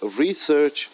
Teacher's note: So the word research is a noun. I'm stressing more on the word re, first syllable.